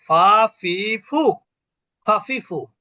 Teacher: নিচের ঠোট উপরের দাঁতের সঙ্গে স্পর্শ করে